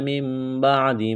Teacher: نون ساکن کے بعد با ہے تو یہاں پر اقلاب کریں گے، آواز ناک میں چھپائیں گے